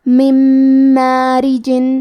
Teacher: میم حروف الادغام بغنہ میں سے ہے تو ہم یہ حکم کو غنہ اور تشدید کے ساتھ ادا کریں گے